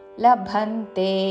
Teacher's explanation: మహాప్రాణాక్షము భా మీద ఆఘాత